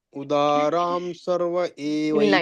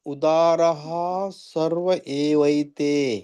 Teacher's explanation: ಅಲ್ಲಿ ಪೂರ್ಣತಃ ಮಧ್ಯದಲ್ಲಿ ಇದ್ದಾಗ ವಿಸರ್ಗ ಪೂರ್ಣ ಉಚ್ಚಾರಣೆ ಬರೋದಿಲ್ಲ. ಉದಾರ ಸರ್ವ ಏವೈತೆ ಬಿಡ್ಲಾರ್ದೆ ಹೇಳ್ಬೇಕು, ಬಟ್ ಅಲ್ಲಿ ಹ ಉಚ್ಚಾರಣೆ ಸ್ವಲ್ಪ ಪ್ರಮಾಣದಲ್ಲಿ ಬರ್ಬೇಕು.